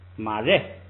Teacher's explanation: 这个变化也是后边这个瑞升降调变成降调，直接读4声马瑞